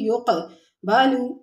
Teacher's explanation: يقبل میں قاف ساکن ہے، کلکلہ کریں گے